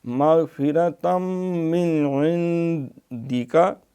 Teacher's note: مَغْفِرَةً مِّنْ عِنْدِكَ، یہ پہلا من جو ہے نون پہ اظہار ہے کیونکہ عین حروف ہلکی ہے